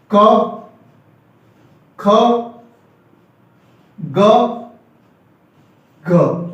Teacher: क, ख, ग, घ, ये शब्द कंठ से बोले जाते हैं।